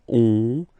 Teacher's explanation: when you get this ON combination, you get this nasal on, really in your nose